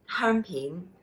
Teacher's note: high tone hēung, mid-rising pin